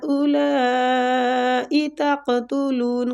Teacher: تو دونوں کو ہم نے تقریباً 4 کاؤنٹ کھینچنا ہے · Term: مد واجب متصل